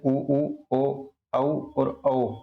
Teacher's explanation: होठों का आकार जो है वृत के भाति जो है गोल हो जाता है उसे जो वृताकार कहते हैं इसमें उ उ ओ औ और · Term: वृत्ताकार